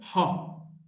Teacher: from the glottis, from inside the glottis, ha. Voiceless, glottal, fricative.